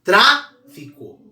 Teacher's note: Tra é a mais forte, é a antepenúltima, tá? A última é co, a penúltima é fi, tra. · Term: sílaba mais forte